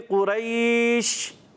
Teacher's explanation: شین ایک ایسا حرف ہے قرآن پاک کا جس میں منہ میں آواز پھیل جاتی ہے